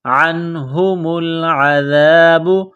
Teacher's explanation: نون ساکن کے بعد ہا ہے، حروف حلقی ہے تو یہاں غنہ نہیں کریں گے